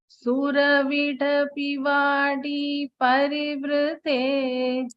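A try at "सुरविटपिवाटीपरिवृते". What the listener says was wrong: I am still hearing a slight D. Can you try one more time?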